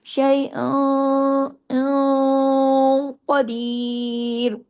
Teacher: Heavy اخفا ہوگا. شیء قدیر، قاف heavy, باقی تمام باریک حروف ہیں